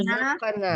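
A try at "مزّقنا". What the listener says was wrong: Mazzaqna, mazzaqna pendek.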